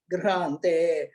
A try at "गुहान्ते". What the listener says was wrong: And the last line, second word is Guhante, not Grihante.